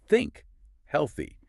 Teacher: It's not quite an F sound or a T sound. It's that sound with your tongue just between your teeth.